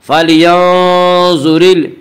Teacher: اس کا قاعدہ یہ ہے کہ را کے اوپر زبر اور پیش آئے تو را کو پر پڑھیں گے، را کے نیچے زیر آئے تو را کو باریک پڑھیں گے